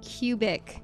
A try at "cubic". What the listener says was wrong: You do not pronounce the k. cubic.